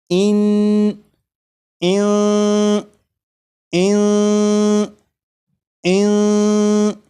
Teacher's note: जब आप ज़बान तालू से नहीं लगने देंगे तो फिर यहाँ पर इख्फा हो जाएगा। इख्फा मतलब نون ساکن کی جو آواز ہوگی وہ ناک میں چھپ جائے گی، اس طرح کی اس میں غنہ بھی ہوگا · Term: اخفا